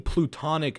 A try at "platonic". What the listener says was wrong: Yeah, platonic. Plutonic, like Pluto, the former planet.